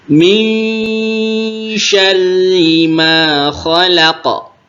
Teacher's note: Didengungkan min syarri, lalu ro-nya tasydid dan kasrah, maka dia tipis